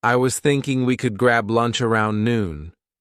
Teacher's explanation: Stressed words are thinking, grab, lunch, noon. The rest, softer, quicker. They connect the sentence but don't carry the main weight.